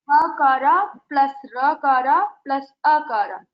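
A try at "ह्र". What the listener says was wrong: Yeah, you should say Repha. Hakara, Repha, and Akara.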